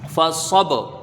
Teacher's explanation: فا کو جلدی پڑھا جائے گا، زبر ہے، صاد کو با میں ملائیں گے، فصب، با حروف قلقلہ میں سے ہے تو یہاں پر ایک لوٹتی ہی آواز آئے گی